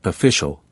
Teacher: It's not pronounced like bicial, but more like official with the middle vowel barely pronounced